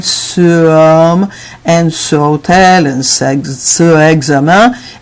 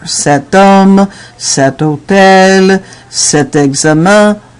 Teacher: So instead of having ce homme and ce hôtel and ce examen, it becomes a little difficult. So we add this T just to blend better.